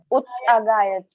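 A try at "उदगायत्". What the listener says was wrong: Udagayat. Not uttagayat. It's not ut. That's why we can take udda. So it will always become da. Uda only. Always uda.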